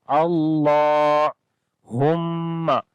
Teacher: میم کے اوپر شد ہے، غنہ کریں گے، آواز کو ناک میں لے کر جائیں گے